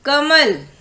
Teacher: क के बाद कोई भी व्यंजन, आपको मैंने पहले भी बताया, बिना स्वर के कोई भी व्यंजन नहीं बोले जाते हैं। तो जब हमने का बोला तो क के साथ में अ की ध्वनि सुनाई दी